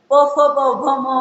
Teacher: त्याच्यानंतर ओष्ठव्य म्हणजे ओठांचा उपयोग करून आपण काही वर्णांचा अक्षरांचं म्हणतो. प फ ब भ म म्हणताना दोन्ही ओठ एकमेकाला चिकटतात. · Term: ओषव्य